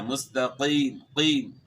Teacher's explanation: جہاں قاف ہے اس کو آپ نے موٹا کرنا ہے، قاف پڑھنا ہے، کاف نہیں پڑھنا، ورنہ معنی جو ہے وہ غلط ہو جائے گا.